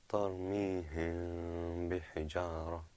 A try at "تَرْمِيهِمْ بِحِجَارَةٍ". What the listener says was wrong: Okay, a little bit longer.